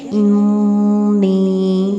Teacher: غنہ کرنا مطلب تشدید جہاں پہ شدت تشدید کو شدت کے ساتھ پڑھنا اور پھر نون تشدید کی آواز کو ناک میں گنگنانا